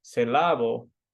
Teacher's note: Saying the word, for example, syllable with a second syllable stress rather than the first create confusion for the listener. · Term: word stress